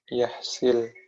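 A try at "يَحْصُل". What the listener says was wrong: Fa in lam yahsul bukan yahsil.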